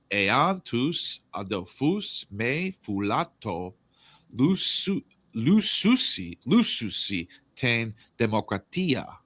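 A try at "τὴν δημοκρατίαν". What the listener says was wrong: The demokratian. You said demokratia without. I didn't hear an N at the end. You didn't enunciate.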